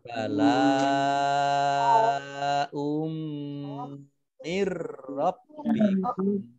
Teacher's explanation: Bala ini lam fathah alif matobi'i, tetapi karena bertemu dengan huruf hamzah dalam satu kata maka ini menjadi mat wajib muttasil, harus dibaca 6 atau 5 harokat. Kemudian hamzah dhammah tanwin bertemu dengan mim, ini bacaan idgham bi gunnah, dibaca mendengung